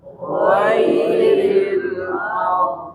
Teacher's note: Jadi tafkhimnya, sifat tafkhimnya ketika waqaf pun dia harus muncul.